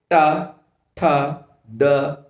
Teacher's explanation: तो ट वर्ग में क्या हो रहा है कि जब इनका उच्चारण होता है तो हमारी जिह्वा क्या होती है, मुड़ती है, फोल्ड होती है, और उसके बाद वो तालु के अग्रभाग से अर्थात जिसे मूर्धा कहा जाता है वहां से टकराकर उच्चारित होती है